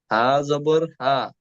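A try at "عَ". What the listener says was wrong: হা না, আইন, আইন। আইন জবর আ।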